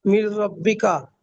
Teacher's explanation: নুন সাকিনের পরে র এসেছে, তাই নুন সাকিনের আওয়াজকে বিনা গুণনায় মিলিয়ে পড়বো, একে ঈদগামে তাম বলে।